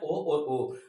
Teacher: उसके बाद कंठोष्ठ, मतलब कंठ और ओष्ठ से जो स्वर निकलते हैं उन्हें कहते हैं ओ और ओ।